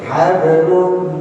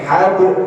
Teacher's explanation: karena dia ada di tengah namanya qalqalah sughra